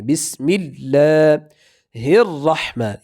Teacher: را کو تشدید کی وجہ سے سختی سے پڑھنا ہے